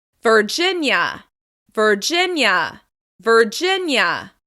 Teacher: Virginia is stressed on the second syllable.